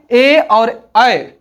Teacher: कंठ और तालू के मेल से ए और अ का उच्चारण होता है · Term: कंठ तालव्य